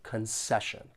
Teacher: When pronouncing this noun, there are three syllables and the stress is on that second syllable.